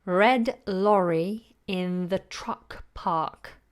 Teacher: The only one that's silent there is the R in the word park, because the following sound is a consonant sound.